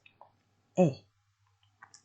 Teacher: in standard British and American English the /e/ sound is made with the tongue relaxed in the mouth not tensed